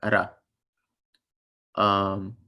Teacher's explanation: The P looking letter is an R, but the R sound that it makes is the R sound in other languages, like in Arabic, how you just tap the R. It's like ra.